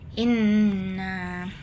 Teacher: huruf nun dibaca dengung penuh dua harakat. Jadi inna dengung dengung jelas. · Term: ghunah, gunnah